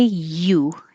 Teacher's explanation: this one looks like a vowel because it's a u however when you say you your tongue is really making a y you it's starting in a high position and sliding down so it really is a consonant